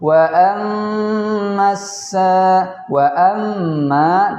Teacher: wa amma, di situ gunnah, kita baca panjang 4 harokat